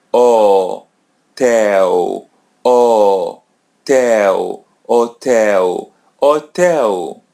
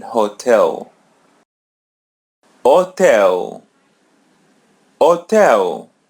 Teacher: O tell O tell letter H come come in the beginning so it's silent we don't pronounce it letter L comes in the end so pronounce it as W